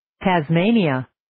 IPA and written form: ,tæz'meɪniʌ (Tasmania)